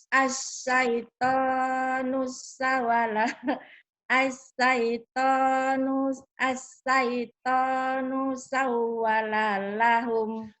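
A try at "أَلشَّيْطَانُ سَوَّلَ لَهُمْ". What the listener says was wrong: kenapa panjang lahumnya? Shin. Asyaitonu sawala lahum. Ash. Asyaitonu sawala lahum.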